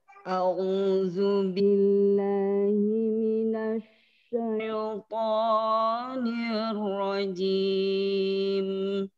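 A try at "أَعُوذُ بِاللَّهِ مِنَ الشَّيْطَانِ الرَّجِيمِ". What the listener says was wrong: A'udzu billahi minasyaiton. Jangan kepanjangan to-nya. Minasyaitonir rajim.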